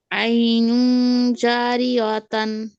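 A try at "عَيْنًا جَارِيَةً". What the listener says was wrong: জারিয়াতান। আইনু জারিয়াতান, খেয়াল করেন। তা হবে কেন আপু? তা দিয়ে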